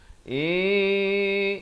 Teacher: Ikhfa hakiki, bukan in, tapi samarkan di antara nun dan sin ya. Nak kata nun pun tidak, sin pun tidak, dua harakat.